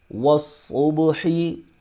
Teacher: صاد کو موٹا کر کے بھی پڑھیں گے اور یہ حروف سفیریہ میں سے بھی ہے، اس کی سیٹی بھی ہوگی